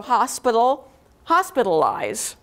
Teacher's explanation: a dactylic stress pattern so stressed unstressed unstressed